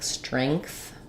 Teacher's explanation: if you're making your NG sound correctly it will just naturally raise that vowel up a little bit